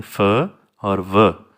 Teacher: हमारे जो टीथ हैं वो लोअर लिप से टच करते हैं और उनके दरमियान में से फ्रिक्शन करते हुए साउंड बनती है वॉइस के एयर के रिलीज़ होने से।